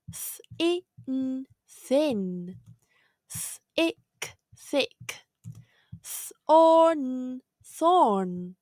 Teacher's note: th makes two sounds the first one is a voiceless sound